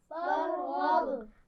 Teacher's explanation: را کو موٹا پڑا جائے گا, غین کو موٹا پڑا جائے گا اور با پر کیا ہوگا؟ قلقلہ ہوگا